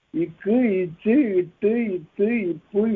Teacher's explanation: இந்த வல்லெழுத்துக்களின் மீது ஏறி நிற்கக்கூடிய உகரம் குறைந்து ஒலிக்கும் தனக்குரிய மாத்திரையில் குறைந்து ஒலிக்கும் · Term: குற்றியலுகரம்